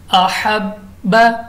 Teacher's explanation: बा कलकला है खूब जमाओं के साथ पढ़ेंगे